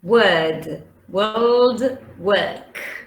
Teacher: all of these take the long schwa. And they are stressed because the long schwa is stressed, and that's a big difference with the schwa.